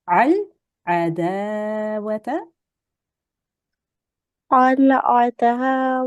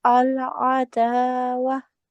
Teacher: You're changing the ta with the fatha into a ha sakin.